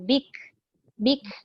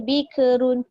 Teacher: Memang dia mati tapi dilepaskan angin selepas dia matikan kaf tu.